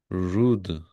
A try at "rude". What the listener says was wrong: Très bien.